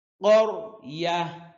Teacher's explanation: কফ জিহ্বার গোড়া তার বরাবর উপরের তালুর সঙ্গে লাগাইয়া উচ্চারণ হয়